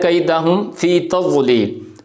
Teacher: اب یہ جو میم ہے اور اس کے بعد کیا آ رہا ہے، کیدہم فی تضلیل، فا آ رہی ہے، تو یہاں پر ہم کیا کر رہے ہیں جی، اظہار کر رہے ہیں، یعنی میم کی جو اپنی اصل آواز ہے وہی مخرج سے ہم پڑھ رہے ہیں، ناک کے اندر ہماری آواز نہیں جا رہی